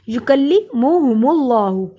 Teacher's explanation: یکلی منہ، یکلی منہ ہم اللہ، یکلیمو نہیں پڑھنا، نہ یکلی پڑھنا ہے، کسی بھی لفظ کو میں نے لمبا نہیں کیا، یکلیمہم اللہ، اللہ کے نام کو موٹا پڑھیں گے، اللہ کے نام سے پہلے پیش ہے